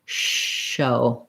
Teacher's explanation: My lips might be a little rounded, like shh or shh. My tongue is further back, away from my teeth, and bunched up a little bit.